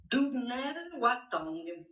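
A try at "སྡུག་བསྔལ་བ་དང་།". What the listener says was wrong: Mais là, tu t'en es très bien sorti. On a entendu un dungel parfait.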